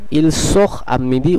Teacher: আটা একটি ভাওয়েল, কিন্তু তেটা এর সঙ্গে সংযুক্ত হলো না, বরং তেটা সাইলেন্টই থেকে গেল। তার প্রথম কারণ হচ্ছে যেটি আমরা নিয়মেই আলোচনা করলাম, সেটি হলো এই তের আগে একটি এখ আছে, এর ফলে ইল সোখ আমিদি উচ্চারণটি হবে।